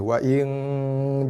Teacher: Dengung, buka mulut, bibir renggang, gigi renggang, lidah tergantung, lidah tak boleh sentuh mana-mana bahagian dalam mulut dengung ikhfa hakiki Wa in dengung. Dengungnya keluar daripada rongga hidung kita.